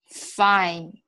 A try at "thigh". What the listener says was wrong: You're saying fine. It's thigh. Yeah, the teeth and the tongue make this sound completely. The lips have nothing to do with this. So it's thigh. So the tongue is between the top teeth and the lower, and you're blowing air through it. Thigh.